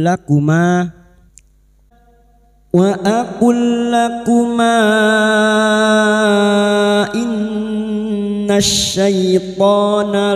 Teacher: Sekarang di sini kita wasal atau terus maka mad jaiz munfasil kita panjangkan empat atau lima harakat. Lakuma in nun yang bertasdid gunah musyadadah kita dengungkan selama tiga harakat.